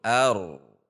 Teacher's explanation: Tetapi di antara keduanya ar tinggi kemudian menurun ar.